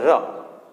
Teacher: ર બોલીએ આપણે એટલે પ્રકંપ, જીભમાં ધ્રુજારી ઉત્પન્ન થાય, ર, બરાબર. તે દંત્ય છે, દાંતને જીભ સ્પર્શે અને જીભમાં કંપન થાય, ર આપણે કહીએ ને ર, તો કંપન થાય. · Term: પ્રકંપી વ્યંજન